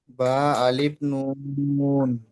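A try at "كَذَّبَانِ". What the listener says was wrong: আলিফ যে টানলেন ওটা বলছি, বা আলিফ টান হয়ে গেছে।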